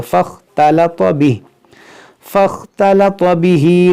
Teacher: तलत, इस ता को बारीक पढ़ेंगे, इस ता को मोटा करेंगे। फ़ख, ये जो अलिफ है इस अलिफ को नहीं पढ़ेंगे, इस फ़ा को ख़ा से मिलाएंगे